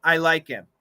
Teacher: there's no h it's gone but that cancellation is natural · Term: dropping the H